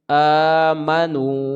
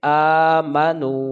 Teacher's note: میم کو جلدی پڑھیں گے، اور نو کو کھینچ کے پڑھیں گے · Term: واو مدہ